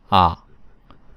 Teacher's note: For A, the tongue needs to stay in the low back area of the mouth. Please do not force it.